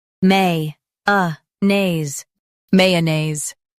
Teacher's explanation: Stress may and keep uh naise smooth.